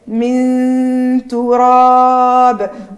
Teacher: وعندي الباء ساكنة مقلقلة